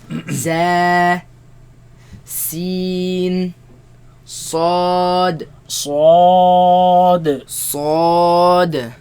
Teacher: They come from the tongue placed behind the bottom teeth. Right? Some scholars, they consider the tip of the tongue placed behind the bottom teeth, but the sound comes from between the tongue now and the empty space between the teeth and the tongue.